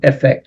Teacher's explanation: the stress is on the first syllable. Effect.